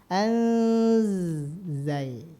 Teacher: huruf z di mana keluarnya masih ingat ujung lidahnya menyentuh ke gigi seri yang bawah · Jadi ini nun sukun kalau ketemu dengan zai maka disamarkan ya. Jadi dibacanya bukan an lagi, bukan anzalna, tapi disamarkan langsung ke zai. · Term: Ikhfa haqiqi